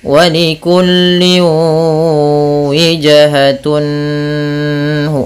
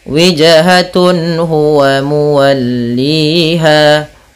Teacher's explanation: Maksudnya apabila ada nun sukun atau an, in, un bertemu dengan huruf halqi yaitu huruf tenggorokan, salah satunya huruf ha, maka dia harus dibaca dengan jelas suara tanwin atau nunnya. Dan tidak boleh ditahan, tidak boleh walikulli wijhatun hu, nggak boleh, tapi jelas saja wijhatun huwa muwalliha. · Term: izhar halqi